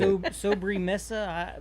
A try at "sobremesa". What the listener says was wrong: You have to roll your R's.